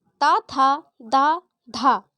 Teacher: मतलब हमारी जिह्वा दंत से टकराती है, इसलिए ता, था, दा, धा ये दंत्य व्यंजन हो गए।